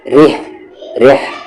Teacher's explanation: ہا کا مخرج مڈل تھروٹ، بیچ والا حلق، اور را پر زیر ہے، اسی لیے یہ را لائٹ ہوگا۔ یہ را ہیوی تھا قریش میں، اور یہاں پر یہ را لائٹ ہے۔